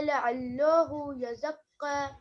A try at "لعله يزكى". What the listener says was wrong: لعلہ لام کو پتلا پڑھنا ہے. لعلہ یزکا.